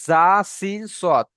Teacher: উপরের দাঁতের আগা, নিচের দাঁতের আগা এবং জিভের আগা লাগিয়ে উচ্চারণ হচ্ছে জা সিন সদ। দেখেন জা সিন সদ, হালকা বাঁশির মতো উচ্চারণ হবে এবং তিনটে অ্যাডজাস্ট হয়ে যাচ্ছে একদম মিডিল পয়েন্টে দেখে।